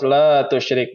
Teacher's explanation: di sini ada mad tabi'i, ya, di mana ada huruf mad alif sebelumnya berharokah fathah. Maka pada lam ini dibacanya 2 harokah panjang.